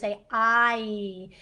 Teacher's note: The tongue is actually moving in your mouth when you say I. It moves from low to high.